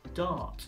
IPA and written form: dɑːt (Dart)